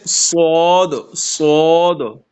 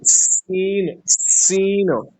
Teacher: تو آ، آپ نے سین اور سواد میں ایک طریقے سے فرق بھی پا لیا، کیونکہ ایک میں سیٹی کی آواز ہے، سوری ایک جو ہے اس میں منہ بھر کے پڑھتے ہیں جو سواد ہے، اور سین کو منہ بھر کے نہیں پڑھتے